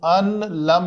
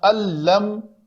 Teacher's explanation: اس نون کے بعد بھی اسی طرح لام آیا تھا جس طرح اس تنوین کے بعد لام آیا، تو ہم نے اس کو ان لم نہیں پڑھا، اس کو پڑھا اللم، نون کو ختم کر دیا بالکل